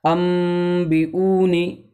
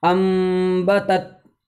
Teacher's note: اس کو پڑھا جائے گا نون کو میم سے بدل کر کے